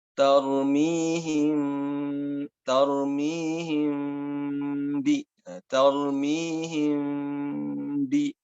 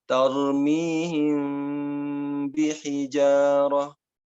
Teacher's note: Tidak langsung tarmihim, tapi ditahan dulu, tidak sampai nempel, kemudian ketika mengucapkan ba, baru ditempelkan. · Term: ikhfa